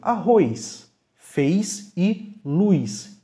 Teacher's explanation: acarretando a pronúncia s em vez do sh que seria o esperado pelo estímulo que o cérebro manda